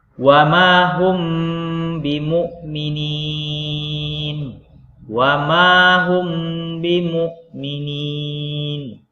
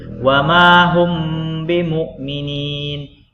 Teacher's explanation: itu caranya mim mati bertemu dengan huruf ba cara bacanya apa menyembunyikan bunyi huruf mim sukun pada kedua bibir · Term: Ikhfa Syafawi